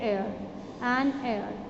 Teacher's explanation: H is silent in such words. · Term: silent H